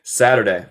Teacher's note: Acento estadounidense decimos más como R por el T. Saturday. Pero también se puede decir Saturday, inglés neutral.